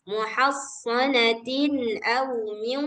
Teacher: Jadi kalau idgham bi gunnah nih cara bacanya harus langsung dimasukkan ke waw terus didengungkan.